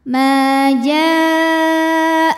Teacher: Maka huruf jim dipanjangkan boleh 4 boleh 5 harokat. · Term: mad wajib muttasil